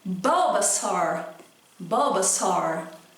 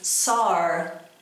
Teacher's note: no final dá uma abridinha antes do R